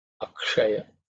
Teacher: Ksha, again, the ksha is the cerebral sha. So the tip of the tongue should be pointing upwards